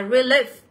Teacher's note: Thì âm này của chúng ta nó sẽ là âm Y dài nhá.